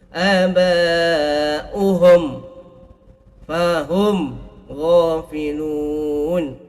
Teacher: Aba'uhum fahum, tutup mulut tu. Aba'uhum, ini panggil Izhar Syafawi, bibir tu tutup. · Izhar syafawi ni hati-hati, jangan didengungkan. Perlu dijelaskan.